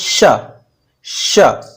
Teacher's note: जीव का अगला हिस्सा थोड़ा ऊपर उठेगा और मसूड़ों के पास स्पर्श करने जैसी स्थिति में होगा स्पर्श नहीं करेगा स्पर्श करने जैसी स्थिति होगी और वहां से जब हम श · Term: तालव्य श